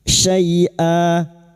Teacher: fathah tanwin yang dibaca wakaf selain tak marbuto mad iwad dua harakat kita panjangkan